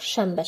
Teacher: Samitlərin tələffüzündə bir məqamda N ilə bağlıdır ki, əgər N samitindən sonra B və M samitləri gələrsə, N tələffüzdə M kimi tələffüz olunacaq.